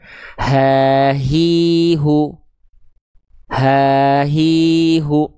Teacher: Jadi kalau hamzah atau H besar dia dilafalkan dari pangkal tenggorokan